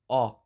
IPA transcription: ɔ